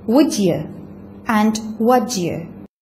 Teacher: instead of in sequences such as would you or what you she uses not palatalized would you and what you